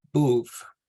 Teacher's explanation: here we have the harsher plosive sound at the beginning and we have the softer in the back